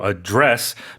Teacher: So, in this in this case, it's a verb, of course. So, we put the stress on the second syllable